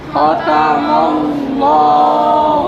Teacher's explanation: اللہ کو کیا کریں گے یہاں پر موٹا کر کے پڑھنا ہے کیوں زبر ہے